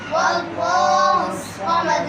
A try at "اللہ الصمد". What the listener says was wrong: واللہ پڑھا ہے، اللہ الصمد،